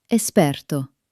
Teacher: When we take Latin words that have an X in English, in Italian, that X usually transforms into a simple, clean S sound